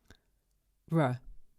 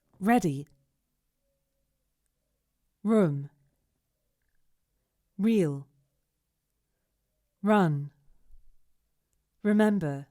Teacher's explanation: We articulate the English R much further forward in the mouth and use the tongue to block the passage of air. R. So in a nutshell, the tongue is going back and down, but the sound is going forward and up.